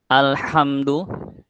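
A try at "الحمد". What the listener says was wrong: Hanya lebih tipis.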